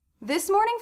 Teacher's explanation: one of the first things I notice is how much this s and M were connected